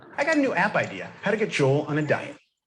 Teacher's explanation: And the stress is on got.